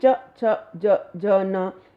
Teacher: दूसरा है तालव्य, च छ ज ज न, ये हमारी जीभ जो है वो तालु से टकराती है, तब जाकर ये ध्वनियाँ निकलती हैं